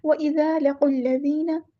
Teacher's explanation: جو دوسرا الف ہے یہ حمزۃ الوصل ہے، یہ وصل کرتے ہوئے یعنی ملاتے ہوئے قاف و لام کے ساتھ، تو حمزۃ الوصل ہمارا ڈراپ ہو جائے گا